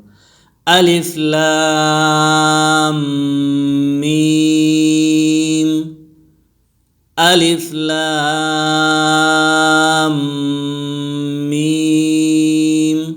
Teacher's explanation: اور اس میں غنہ بھی ہوگا، یعنی آواز ناک میں جائے گی